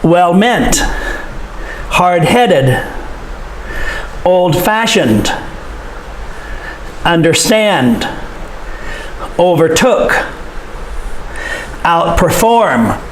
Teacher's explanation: for the adjectives and the verbs, the stress is on the second syllable.